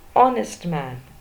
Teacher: Again H is silent. The first sound is a vowel sound O.